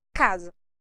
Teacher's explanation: quando nós temos palavras na língua portuguesa que são grafadas com a letra s e elas vêm entre duas vogais o nosso S tem o som de z